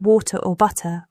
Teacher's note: the T in words like water or butter often sounds like a soft D.